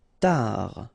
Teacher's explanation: Final D not pronounced.